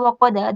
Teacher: دال پہ قلقلہ ہوگا